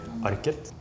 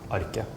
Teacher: So some places in Norway you would pronounce the T, so you would say Arket. And in other places in Norway you would just drop the T, like my accent, and then it would just be Arke.